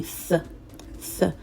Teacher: if you're learning the Castilian Spanish, that's the Spanish dialect of Spain, of the people of Spain, then the sound is going to be th